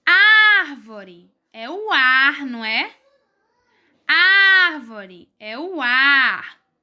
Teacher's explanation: na palavra árvore o ar é pronunciado com mais força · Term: sílaba tônica